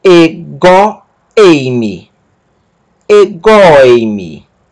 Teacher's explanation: Essa palavra não tem acento porque ela perde o seu acento para anterior e ela é pronunciada com a palavra anterior.